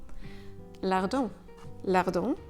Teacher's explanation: and then try and push the air through your nose o the sound kind of happens at the back of your throat and also at the back of your nose remember you should never pronounce the consonant in this nasal sound